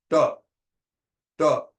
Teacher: when we are saying ta at the palatal, the subapical will touch.